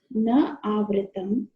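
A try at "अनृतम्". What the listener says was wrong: Anrutam. Na Anrutam. Okay, not Avrutam.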